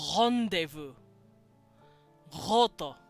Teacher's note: It's that very Frenchy guttural R sound